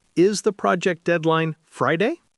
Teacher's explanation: for a yes no question like is the project deadline Friday, the pitch must rise. The rising pitch acts as a giant question mark for the listener.